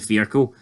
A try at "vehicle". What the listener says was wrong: Vehicle. There's no R in vehicle.